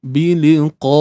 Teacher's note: Bi 1 harakat, li 1 harakat, qa di sini qaf yang berbaris atas bunyinya qa. Kita pun tahu ianya adalah huruf yang bersifat tebal. Dan macam mana untuk dapatkan sifat tebal? Kena angkat pangkal lidah. Itulah isti'la.